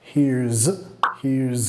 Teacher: hay que pegar el sonido Z ahí, muy importante, porque es el verbo, here is